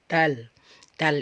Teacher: Dal itu ketika kita ucapkan tidak ada ee udaranya ya karena huruf hijaiah Dal ini ee hurufnya tempat keluarnya itu